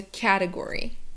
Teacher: is category and here what's tricky is the t sound because it's not an actual t sound it's like a flap t or the american t but it's kind of a d sound